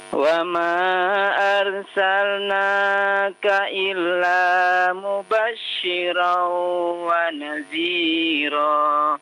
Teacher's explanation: Mubasysyiran idgham bi gunnah, ya, ditahan 2 harokat.